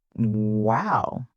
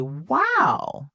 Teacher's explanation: I can say wow, flat, bored tone, or I can say wow, excited, rising tone.